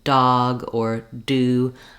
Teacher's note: when I say A D sound like in dog or do I stop the air completely and then it bursts out